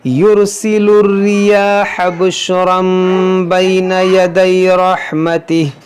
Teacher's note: دیکھیں یہاں پر چھوٹا سا میم ہے, کیوں ہے؟ کیونکہ تنوین کے بعد با ہے, تو یہاں پر بھی اقلاب ہوگا